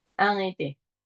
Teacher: Ahí puedes unir la N y la E si quieres.